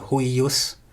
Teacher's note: in pronunciation that intervocalic I is a geminate